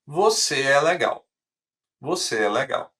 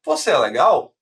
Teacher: E agora a entonação vai subir. · Afirmação, a gente tem uma entonação descendo.